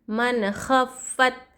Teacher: ظاہر کر کے پڑھنا چاہیے نون کی آواز کو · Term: اظہار